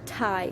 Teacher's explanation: The first t in tie, when you say tie, keep your finger in front of your mouth and you say tie. When you say tie, there is a puff of air coming out of your mouth after you say t, the first t. The same goes with peep. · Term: aspiration